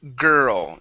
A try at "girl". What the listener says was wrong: Instead of gal, it is girl.